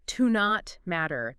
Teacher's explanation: You might hear it almost like one word, like to not matter. The T in not kind of blends into the M.